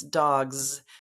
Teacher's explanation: but um the idea of dog G GG is voiced so my voice stays on when I have the plural and it's dogs so now I have the z sound you